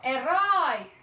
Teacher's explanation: o O, ele é mais forte e ainda é acentuado, ó. E o I, ele já é mais brando, é como se a palavra fosse baixando no seu final. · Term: Decrescente